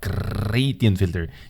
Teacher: say it with me with a rolling r